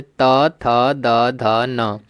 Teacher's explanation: और त वर्ग दंत होता है